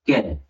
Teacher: क की आवाज आई और साथ में अ की भी आवाज आ रही है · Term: व्यंजन